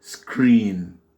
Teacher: Et les deux voyelles là, le E-E, ça se prononce avec ce phonème I, c'est un I long. I, donc on dit screen.